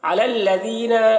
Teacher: علی الذین، یہاں پر دیکھیے یا علی کے اوپر جو یا ہے، یا کو نہیں پڑھا جا رہا ہے، لام کو لام سے ملا کر پڑھیں گے۔ لذینہ، ذال کو باریک پڑھیں گے، کہیں پر بھی ذال ہو تو اسے باریک پڑھیں گے اور اسے ایک الف کے برابر کھینچ کر پڑھیں گے کیونکہ یا مدہ ہے۔